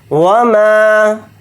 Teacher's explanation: فَسَنُيَسِّرُهُ لِلْعُسْرَى وَمَا يُغْنِي عَنْهُ مَالُهُ إِذَا تَرَدَّى، وَمَا، واو کو جلدی پڑھیں گے، میم کے ساتھ الف مدہ ہے، میم الف زبر ما کو تھوڑا کھینچ کر پڑھیں گے، یا کو غین کے ساتھ ملا کر پڑھیں گے، نون کے ساتھ یا مدہ ہے، نون یا زین نی کو تھوڑا کھینچ کر پڑھیں گے، ایک الف کی مقدار۔